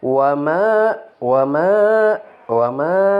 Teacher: harus dipanjangkan dua harokat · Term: Mad Thobi'i